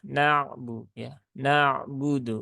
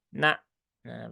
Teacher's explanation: Ain itu sifatnya tawasuk kemudian Hamzah itu sifatnya dia syiddah nah syiddah ya Maka kalau syiddah itu dia na nah begitu